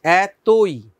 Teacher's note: ত এর সাথে ওকার আমরা উচ্চারণ করছি, এতই, যদিও বানানে কিন্তু ওকার ছিল না, তাহলে এতই, ত এর সাথে ওকার উচ্চারণ করতে হবে।